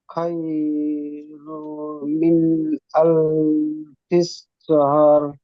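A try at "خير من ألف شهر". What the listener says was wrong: জি খায়রুম বলে এখানে গুন্না হবে, কারণ কি দেখেন এই মিম এসছে।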